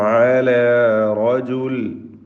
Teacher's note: റാഇന് പൂർണ്ണമായ തഫ്ഖീം കൊടുക്കുക